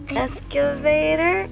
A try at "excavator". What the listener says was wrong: Excavator. Why do you keep saying excavator? Where's the Q coming from?